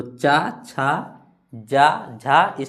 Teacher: ऊपर की ओर भाग में टच होगा जीभ यानी तालु।